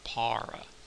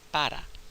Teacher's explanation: If you hear a native Spanish speaker saying the word, you'll hear them say something closer to para with an unaspirated P. Notice the aspiration's not there, and also the R is really an alveolar flap